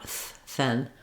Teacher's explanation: no vibration in the throat just uh air coming out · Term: voiceless th sound